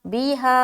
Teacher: आगे बीहा, बाज़िर बी, हा अलिफ मद ज़बर हा, बीहा, 3 से 4 अलिफ खींच रहे, और हर्फ मद के बाद हमज़ा दूसरे कलमे में है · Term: मद्दे मुनफसिल